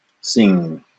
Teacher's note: the N touched towards the back of your mouth near your throat